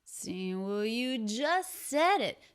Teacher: the energy is going up up up up up up to the pitch on said